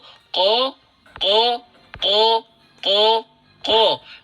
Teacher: mengucapkan huruf Qof dengan sengaja membulatkan bibir untuk bunyi 'o'